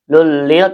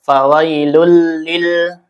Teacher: Dan idgham bila gunah itu ada dua, lam dan ro ya. Dibaca idgamkan langsung ke lam ya. Lulil tanpa gunah tanpa ditahan ya.